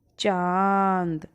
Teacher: क्या था हमारा चांद तो आप देख ही रहे हैं और महसूस भी कर रहे हैं कि हमारी हवा नाक और मुंह से निकल रही है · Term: अनुनासिक ध्वनि